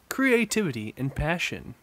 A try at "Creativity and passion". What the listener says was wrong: It sounded like one word.